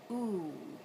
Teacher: So if you're moving your tongue a little bit up towards the back, the soft palate, ooh, then, and you're rounding your lips forward, then you'll get the sound ooh. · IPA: /uʷ/